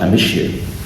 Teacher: they're going to change the se sound into a sh sound, because you starts with a yes sound.